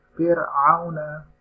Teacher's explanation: ro seharusnya dibaca tipis, tapi di sini dibaca tebal